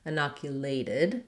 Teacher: We have our diphthong A, glide and hold that A vowel a little longer. Our T ends up sounding like a flap or a light D in this word, and then I should write that with letter I.